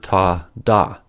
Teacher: The tip of the tongue blocks the air for ta, da.